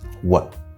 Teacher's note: we have w plus a plus glottal stop t